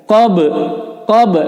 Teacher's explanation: ba ini adalah huruf qalqalah, berarti dipantulkan.